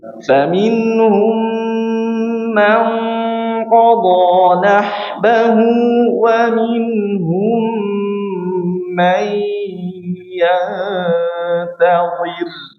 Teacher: Namun berbeda hurufnya, qaf dan ta. Berarti kan ketika qaf maka suaranya lebih ditebalkan.